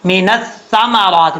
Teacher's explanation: من الثمرات، اب نون کے بعد نیکسٹ لائن پہ سا ہے، سا جو ہے بغیر سیٹی کے ساتھ پڑھا جائے گا ، من الثمرات، بعض اوقات لوگ پڑھتے من الثمرات، یہ غلط